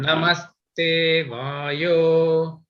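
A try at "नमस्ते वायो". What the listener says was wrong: That Vayo should not go down. Namaste Vayo. The Vayo should not go, it should be in the same pitch, right? Namaste Vayo. Like that.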